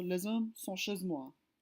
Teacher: The French H is usually silent if it starts a word.